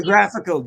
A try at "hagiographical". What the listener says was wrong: Did you put an I in there? But there's a hard G in it.